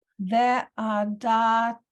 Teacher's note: the ayin in here, it doesn't make a sound because there's no vowel under it